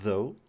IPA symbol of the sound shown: ð